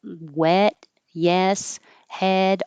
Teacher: the jaw is rather High and the tongue is kind of just totally flat not higher not lower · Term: e vowel